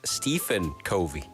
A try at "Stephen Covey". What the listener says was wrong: The PH in this instance is a V. Not Stephen.